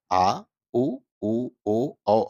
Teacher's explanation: पश स्वर कहते हैं पश स्वर का मतलब होता है कि जिन स्वरों का उच्चारण जीभ का पश्य भाग या पिछला भाग करता है पिछला भाग उठता है उसे हम पश्य स्वर कहते हैं